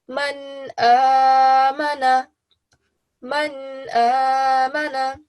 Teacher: Since alif is part of the 6 letters that we have over here, we will make sure that we don't give it a nasal sound, but we give it a complete noon sound. So it will sound something like man amana, man amana.